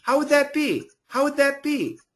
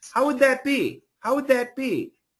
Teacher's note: the TH is going to be a vibrated TH. So it sounds similar to a D, but it's not a D, it is the TH.